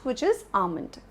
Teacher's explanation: Almond, two parts, stress is on the first part